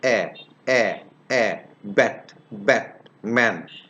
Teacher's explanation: You can notice that it originates in the front part of the vocal tract.